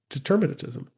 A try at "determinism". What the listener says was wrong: Yeah, you said determinism. Yes, you keep putting a T in there.